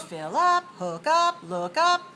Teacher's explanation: we usually stress the second word of these phrasal verbs